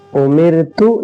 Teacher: رائے ساکنہ سے پہلے زیر ہے اس لیے را کو ہم باریک پڑھیں گے۔ امرتو، حمزہ پیش او، میم را زیر مر، امر، تا پیش تو، امرتو۔